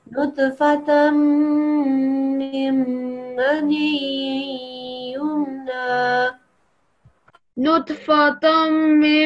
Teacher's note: So we don't make a noon sound anymore. We don't say tan anymore. We say tam.